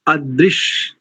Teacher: आदृश नहीं करेंगे, आ नहीं, अदृश ह्रस्व